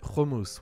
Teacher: Most Israelis will pronounce it hummus with a guttural chet sound.